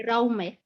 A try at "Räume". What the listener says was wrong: Is it Raume oder Räume? Das ist, yeah, because you say Raum, if it's room, then Raum. Yeah, Raum, then Umlaut, Räume.